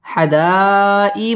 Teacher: মধ্যে মুত্তাসিল চার আলিফ টান দিয়ে পড়তে হবে